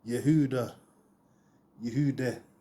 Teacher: The H is soft and often drops in pronunciation.